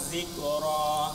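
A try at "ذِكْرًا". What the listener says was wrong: Hati-hati hurufnya zal bukan zai. bukan Ini dia, ini bacanya ini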